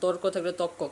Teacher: আধুনিক চলতি বাংলায় অনেক ক্ষেত্রে রোয়াকার লোপ পায়